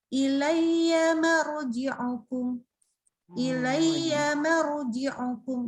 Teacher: Jadi huruf sebelumnya tetap tipis, tapi waktu masuk ro langsung tafkhim. Jadi naikin lidahnya di saat itu juga.